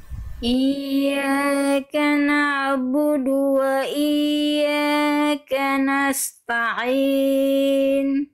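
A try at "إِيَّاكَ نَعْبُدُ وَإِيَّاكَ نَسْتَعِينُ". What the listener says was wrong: Oke, di bagian ya bertasydid, bagian iyyaka ada dua kali, iyyaka wa iyyaka. Ya tasydidnya ditekan Bunda. Iya, jangan datar. Iya, enggak, jangan iya, tapi tekan makhraj ja-nya itu kan makhraj hurufnya itu di tengah lidah diarahkan ke langit-langit, lebih tekan lagi ke atas.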